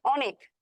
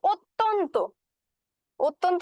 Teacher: অত্যন্ত বলি তখন কিন্তু আবার ও ধ্বনির মত উচ্চারণ আসছে